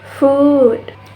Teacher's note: The tongue is high and the back part is raised, and the lips are rounded.